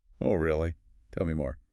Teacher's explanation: You want me to keep talking. Warm, inviting, with a gentle falling tone. · The pitch went down a little, but softly.